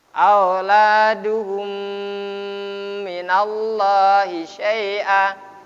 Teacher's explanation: Lam jalalah ini dibaca tafkhim. Syaratnya harus ada huruf yang digaris atas atau garis depan.